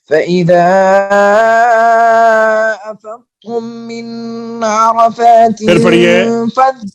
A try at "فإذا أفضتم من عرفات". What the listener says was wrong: پھر پڑھیے فإذا سے پھر پڑھیے غنہ چھوڑ رہے ہیں.